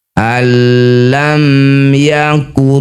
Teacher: Nun sukun atau tanwin bertemu lam atau ro disebut idgham bila ghunah. Masukkan bunyi nun pada huruf berikutnya yaitu ro tanpa dengung.